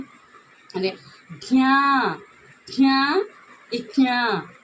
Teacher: జ్ఞ అనేది అంటే ముక్కుతో పలకాలి. అనునాసికం అంటే ముక్కుతో పలకాలి.